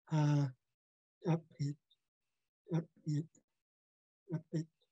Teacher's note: It's dupchu, meaning mound or hump. The P with a glottal stop following is unique to Haida. You have to pop or kick the P out.